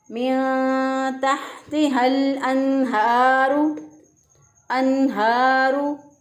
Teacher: अब देखें अनहारू, इसमें नून साकिन के बाद देखें हा हरूफ हलक़ी में से हा आ गया, तो नून साकिन ये नून तनवीन के बाद जब हरूफ हलक़ी में से कोई हरफ आ जाए तो वहाँ पर हम इजहार करते हैं, नून साकिन की आवाज़ को ज़ाहिर करते हुए पढ़ेंगे